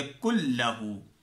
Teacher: يَكُنْ لَهُ، نون ساکن ہو رہا ہے، وَلَمْ يَكُنْ لَهُ، يَكُنْ لَهُ ہے اصل میں. ٹھیک ہے، ہم نے نون کو چھوڑ دیا ہے اور کاف اور لام کو ملا دیا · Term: بلا غنہ